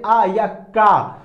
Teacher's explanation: ये जो ध्वनि निकल रही है ज्यादा इम्पैक्ट किस पे कर रही है, कंठ पे या गले पे कर रही है, ज्यादा प्रभाव डाल रही है, इसीलिए हमको इसको कहते हैं कौन से वर्ड, कंठ वाले वर्ड।